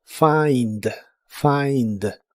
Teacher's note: Se pronuncia como si tuviera una a entre la f y la i.